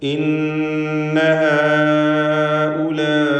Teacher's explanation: ഇന്ന എന്ന് പറയുമ്പോൾ ശബ്ദമുള്ള നൂനിനെ മണിക്കണം.